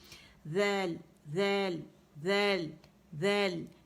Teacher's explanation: آپ نے ذیل کے مخرج پہ رہنا ہے، یعنی آپ کا جو زبان کے کنارے یہ سامنے کے 2 دانتوں کو لگیں گے. ٹھیک ہے، ذیل ذیل ذیل ذیل، یہ آپ کی آواز ہونی چاہیے، مخرج پراپر ہونا چاہیے.